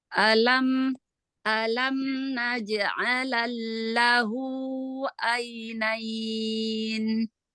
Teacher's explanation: Lam yang pertama, lamnya sukun, nggak ada harokat. Langsung masuk ke lam tasydid.